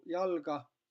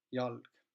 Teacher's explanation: kõigepealt esimene asi, mis juhtus, et lühikesed vokaalid kadusid sõna lõpust